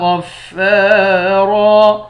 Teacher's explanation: غین اور را دونوں کو موٹا پڑھیں گے۔ فا کے بعد الف ہے، اس الف کو بھی 1 الف کے مقدار کھینچ کر پڑھیں گے۔ · 2 زبر کی تنوین میں جب وقف کریں گے تو 1 زبر بن جائے گا۔